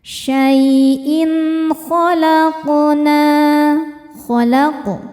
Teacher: sukunnya sukun asli dan berada di tengah bacaan. Cara bacanya dipantulkan dengan pantulan yang kecil. · in hukumnya izhar halqi karena ada tanwin kasrah menghadapi huruf halqi yaitu kha, huruf tenggorokan. Cara bacanya tanwin dibaca jelas. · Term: qalqalah sugro